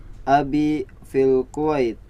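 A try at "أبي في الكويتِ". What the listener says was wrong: Dilengkapin sampai harokat terakhir bacanya. Fil Kuwaiti ya.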